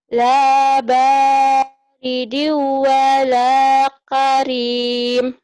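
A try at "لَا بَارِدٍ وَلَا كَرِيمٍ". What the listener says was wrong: K-nya jangan ditahan. Karim. Karim. Yang pendek jangan ditahan. Jangan mentang-mentang lagu. Lembaridi wala karim. Karim. kosa jangan.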